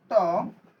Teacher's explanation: ত বললে আমাদের অল্প বাতাস বের হয়, এজন্য এটা হচ্ছে অল্প প্রাণ।